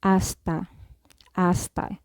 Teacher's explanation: So in Spanish, the letter H is not pronounced. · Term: silent letter